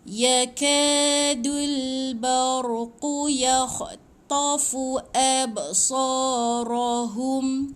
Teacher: Mati dengan ba ada bunyi pantulan sikit. So ada alif kecil panjang 2 harakat.